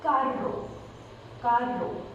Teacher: Then the next hard R will be written it as double R. Sound is made when tongue twists rapidly amongst the roof of the mouth